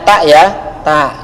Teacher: makhraj ta adalah ujung lidah bertemu dengan gigi depan bagian atas